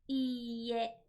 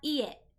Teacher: You must lengthen out that vowel sound in order to have the correct pronunciation. If you do not, you actually say a different word completely.